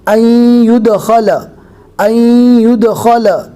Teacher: لیکن نون کی آواز یا کے ساتھ مدغم ہو جائے گی، مل جائے گی۔